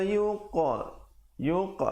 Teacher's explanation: yuqa ada pantulan khalkhalah di situ